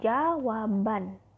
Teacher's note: Dan contoh lain dalam proses penyembuhan sufiks an, pada kata dasar jawab akan terjadi pergeseran letak bunyi B ke belakang, membentuk suku kata baru. Pada kata jawab ditambah an, maka terdengar bunyi jawaban.